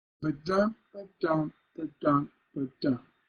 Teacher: the ba is no stress and dum is stress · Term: stresses